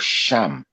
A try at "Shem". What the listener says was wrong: Sham is Ham, I hope you know that. Shem is Shem, and Sham is Ham. So you're saying it, you're pronouncing it wrong.